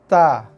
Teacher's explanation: Okey, kemudian sifat huruf ta ni juga dia ada keluar angin sikit. Ta. Boleh dengar tak angin tu? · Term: hembusan nafas